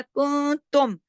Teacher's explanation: मीम की आवाज पूरी नजर आ रही ना आपको, नून की पूरी नहीं आ रही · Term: इजहार शफवी